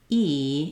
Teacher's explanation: If you say E, you'll feel that your mouth isn't very open. Your tongue fills up most of the space in your mouth. And the reason it sounds like that is there's just this little space E in the front for that sound to resonate. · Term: E sound